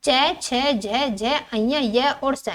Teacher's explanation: इस वर्ग की सभी ध्वनियों का उच्चारण जीवा के मध्य भाग तालु से स्पर्श करता है। उन्हें तालव्य कहते हैं।